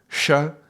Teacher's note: the second sound is cerebral, so the tongue is going up